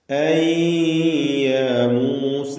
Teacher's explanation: അൻ എന്ന സാക്കിനത്തായ നൂനിനെ യായിലേക്ക് ലയിപ്പിച്ച് മണിക്കണം. ഇദ്ഗാം ബിഗുന്ന നാഖിസ്, യായിലേക്ക് ലയിപ്പിച്ച് മണിച്ചുകൊണ്ട് ഉച്ചരിക്കുക.